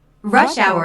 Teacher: rush hour is a compound noun with the main stress on the first word